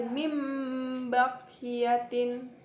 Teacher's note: Cara membacanya adalah dengan menyuarakan huruf nun sukun atau tanwin menjadi suara mim dengan menerapkan dua bibir dengan mendengung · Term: iqlab